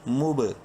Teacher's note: زبر لا، ہا زبر ہا، ان اللہ، میم با پیش مب، با حروف قلقلہ میں سے ہے جو کہ 5 ہیں، قاف طا با جیم دال، ساکن ہونے کی وجہ سے اس پر قلقلہ ہوگا